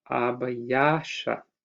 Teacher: because L and T merge into sh, we have a disguised suffix in this definite plural. So these nouns end in ayasha in the definite plural.